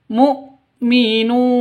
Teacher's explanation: NU panjang dua ketukan karena ada wau mati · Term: Mad asli